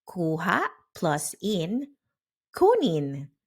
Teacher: Kuha plus in, kunin. The ha disappears. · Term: disappearing final vowel